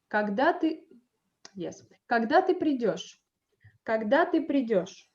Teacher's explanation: By the end of the phrase, I also like lower my tone and the intonation falls down.